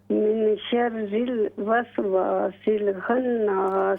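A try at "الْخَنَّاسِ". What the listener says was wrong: खा को मोटा करें।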